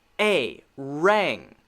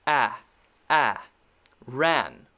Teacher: when I say rang, I say more of an A sound, the long A sound.